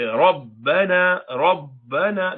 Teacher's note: you don't do qalqala when they are together as a combined letter in the form of mushaddad letter